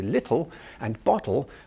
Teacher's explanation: our tongue is sitting forward on our gum ridge almost touching our front teeth but not quite